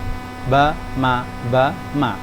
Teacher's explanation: Karena mim dan ba di sini keluarnya dari apa? Syafah, dari mulut. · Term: syafawi